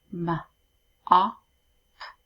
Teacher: And we can hear that ah sound the O is making. And that is a short vowel sound.